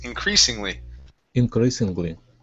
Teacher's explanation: So the S here instead of being a voiced S will be an unvoiced S.